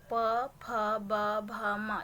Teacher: ये जो होती है ना हमारे ओष्ठ से होती है, यानी कि जब हम लोग प बोलते हैं ना तो हमारे दोनों ओंठ आपस में टकराती है, तो इसीलिए ओष्ठ यानी कि ओंठ से होती है।